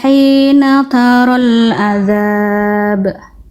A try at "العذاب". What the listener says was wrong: Ini saya sedikit agak tandai warna merah karena Bunda tadi melafalkan masih kurang kuat, bahkan betul-betul kayak kedengarannya kayak hamzah. Tadi ain Bunda ketika huruf ain ini berharokat Bun, kesalahan Bunda apa? Ain ketika dia berharokat ya, gitu. Ain harokat itu kesalahannya apa?